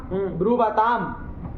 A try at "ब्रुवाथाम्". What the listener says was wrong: अल्प प्राण बोला। थाम,